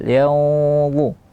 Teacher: Yanzu ikhfa-nya tebal. Kenapa begitu? Karena dia huruf isti'la. Tidak boleh tipis.